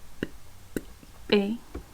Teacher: cuando tú emites el fono P, si te das cuenta, va a haber un cierre total de la salida del aire. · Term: oclusivo